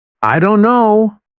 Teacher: Instead of pronouncing every letter, many native speakers say, "I don't know." The t sound is dropped completely. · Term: dropped sounds